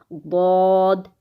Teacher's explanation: پیچھے سے زبان اٹھے گی اور سائیڈ پر بھی لگے گی